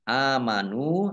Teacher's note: Ayyuhalladzina, lamnya dibaca double, ada tasdidnya, dzal kasroh ya sukun mat tobi'i panjang 2 harokat, alladzina ini kata sambung atau isim mausul, amanu alif fathah berdiri mat tobi'i, nun domah wawu sukun mat tobi'i, lam fathah alif juga mat tobi'i, masing-masing dibaca panjang 2 harokat